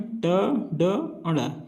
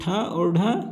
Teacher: ट वर्ण में ट, ड, ण ये अल्पप्राण है। और ठ और ढ महाप्राण है।